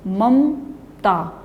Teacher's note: जो दूसरा म है उसके बाद अ की ध्वनि बोली ही नहीं, आधा म बोलते हैं